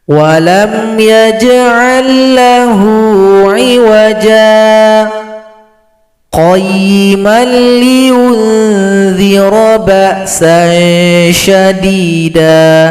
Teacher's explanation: Jim ini panjangkan dua ketukan, tahan nafas, baru gabung dengan qayyiman. Jadi tidak boleh digabung langsung. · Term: sakta